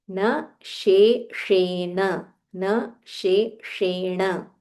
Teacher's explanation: so there is a talavya sh it just comes from your palate just above your upper teeth sh followed by murdanya sh where you have to roll your tongue